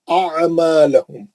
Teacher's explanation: یہ عین بیچ حلق والا عین ہے. اعمالہم نہیں، اعمالہم، عین سے آتا، الف سے نہیں پڑھنا، الف سے پڑھنے کا زمانہ چلے گا.